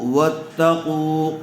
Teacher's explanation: قاف کو پر کر کے پڑھیں گے اور تھوڑا کھینچ کر پڑھیں گے، اس لیے کہ پیش والے حرف کے بعد واو مدہ آئی ہوئی ہے